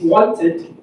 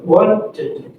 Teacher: The schwa, the sound, adds a whole syllable to a word.